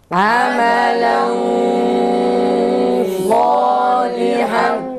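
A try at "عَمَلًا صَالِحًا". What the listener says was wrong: Güzel, gunne biraz daha kalın çıksın. Bazı arkadaşlar genizden çıkan sesi gunneyi ince okuyor. Sad ve diğer kalın harflerde gunne biraz kalın çıkması gerekir. İnce harflerdeki gibi değil.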